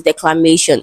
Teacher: declamation is stressed on may, so that is the syllable before tion